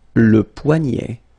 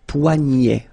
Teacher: this combination of ET at the end will basically open the sound, so you get poignet.